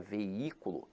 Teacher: a palavra veículo, apesar de ter hiato, veja que a sílaba tônica se encontra na antepenúltima sílaba. Então aqui ela é acentuada pela regra da proparoxítona.